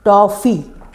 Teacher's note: यह अंग्रेजी भाषा से हमने लिया है और ये आ और ओ के बीच की स्थिति है। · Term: आगत स्वर